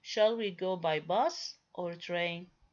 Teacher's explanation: A rise occurs on each item in the list except the last, on which there is a fall, indicating that the list is complete. · When I produce the first option, I produce it with a rising tone, while the second option, which is the end of the list, I produce it with a falling tone. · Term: alternative question